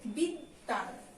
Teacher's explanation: দয়ের সঙ্গে ব ফলা থাকলে দয়ের ডাবল উচ্চারণ হবে